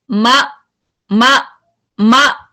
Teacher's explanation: जब आप मा कर रहे हैं तो आपका सांस कंटिन्यू नहीं हो रहा. मा, आप देख रहे हैं सांस कंटिन्यू हो रहा है कोई, मा.